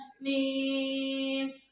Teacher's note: दोनों होंठों के बैरूनी खुश्की वाले हिस्से को मिलाने से अदा होता है